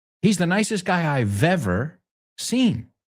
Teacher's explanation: La V de ever, de I've, se une con el ever.